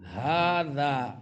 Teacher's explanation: ہا دو آنکھوں والی ہا جو ہے حلق کے اس حصے سے جو سینے کے قریب ہے